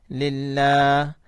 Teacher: اللہ کا نام زہر کے ساتھ آیا تو اس لیے ہم نے باریک کر کے پڑھا